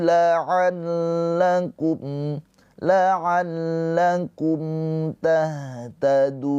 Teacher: Mim sukun bertemu selain mim dan ba. Ini izhar syafawi. Mimnya dibaca dengan jelas.